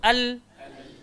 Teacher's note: Lam ni keluar dekat mana? Hujung lidah. Langgar langit bahagian atas depan sekali.